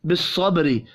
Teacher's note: با ساکن پر قلقلہ کریں گے